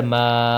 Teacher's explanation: الف مدہ پھر ایک الف کے برابر لمبا ہوگا